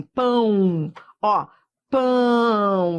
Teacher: isso aqui é um ditongo que vai da vogal pra semivogal semivogal é sempre som de i ou de u ó pão